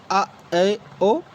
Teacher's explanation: अर्ध विवर्त स्वर के उच्चारण में मुख द्वार अध खुला होता है।